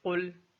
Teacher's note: قوف کو موٹا پڑھا جائے گا جبکہ لام کو باریک پڑھیں گے